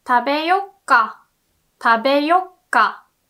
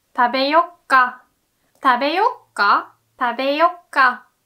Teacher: And often this う turns into small つ.